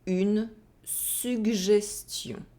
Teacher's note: So you have the [g] and the [ʒ] together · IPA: [gʒ]